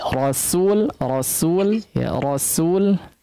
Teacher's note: perhatikan rasul ya, sinnya agak tipiskan lagi